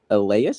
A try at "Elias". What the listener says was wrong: Ellis. It's spelled Elias, but it said Ellis. At least down here, that's how you say it.